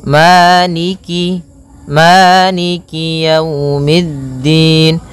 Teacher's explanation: Jangan sampai dibaca dengan e tapi dia i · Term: kasrahnya